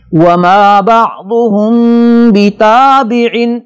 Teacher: یہاں میم کے بعد با آ رہا ہے, اس میں اس انداز پہ ہم نے میم کو غنے کے ساتھ پڑھنا ہے کہ میم کے بعد با والا غنہ یہاں پہ ہوگا.